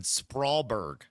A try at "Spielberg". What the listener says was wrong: Spielberg. There's no R in there. I don't think there's an R there, though. In the front part of the word.